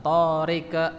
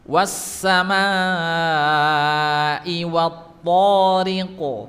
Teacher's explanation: Kemudian memiliki sifat isti'la huruf qaf itu, jadi tebal bacanya, bukan tariq, tapi tariqo, elqo ya, bukan ike, bukan at-tariq, tapi iqo.